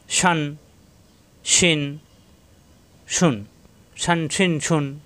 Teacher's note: জিব্বার মাঝখানে উপরে তালুতে চাপ দিয়ে শিন